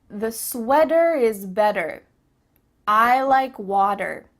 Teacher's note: In American English, a T that's between two vowel sounds, it doesn't always have to be a vowel, but between two vowel sounds is going to change to a D. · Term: change a t sound